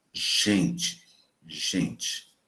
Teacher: quando a letra G está diante de E e de I, ela passa a ser uma fricativa alvo-palatal